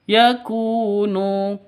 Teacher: ynya juga jelas karena izhar syafawi kum yakunu seperti itu yaakunu ku dan NU sama-sama eh Mad Thobi'i sama-sama panjang dua ketukan Kenapa karena ada wau mati diawali dengan Dom domah wau mati